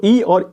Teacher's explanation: जो दोनों ई वो तालव्य से बोली जाती है